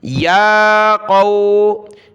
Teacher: یا کے اوپر کھڑا زبر ہے، ایک الف کی مقدار کھینچا